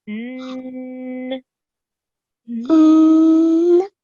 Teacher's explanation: you do a ghunna, which is a nasal sound, when you pronounce this noon, and you sit on it for 2 seconds. So n.